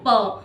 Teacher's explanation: जब हम पा बोलते हैं ना प, तो ये हमारे ओंठ मिल जाते हैं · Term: ओष्ठ